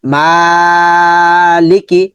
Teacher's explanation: মা লাম নিচে জ মানে বাংলা অস্বীকার লি মালি কাফ নিচে জ আছে মানে বাংলা অসীকার কি মালিক মাটা লম্বা হবে এই দুটা দ্রুত করে পড়তে হবে